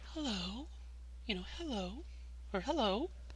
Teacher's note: it's like you're really breathy kind of voice that you would use